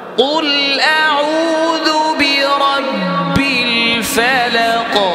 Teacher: অনেকে আউযু, কুল আউযু এগুলোর মধ্যে জালটাকে মোটা করে ফেলে, না খেয়াল করতে হবে, জাল পাতলা হবে, ওয়া মোটা হবে।